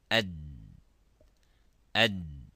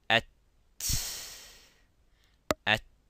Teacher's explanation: if we pronounce the dal, it stops completely. Ad, ad. And look at the ta. At, at. And if you put your hands just close to your mouth by sounding ad, ad, there is no air coming.